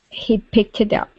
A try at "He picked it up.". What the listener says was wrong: Okay, so what I want you to do here is remove this T at the end of the word pick. Okay, I want you to think of this as 2 separate words. Okay, so pick alone and then tit.